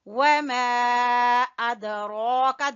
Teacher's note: دال کے اوپر قلقلہ اور را کے اوپر کھڑی زبر